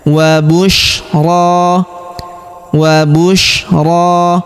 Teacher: huruf ro kita panjangkan dua harakat karena terdapat alif kecil di atasnya dan juga terdapat alif bengkok atau alif maksurah di depannya ya.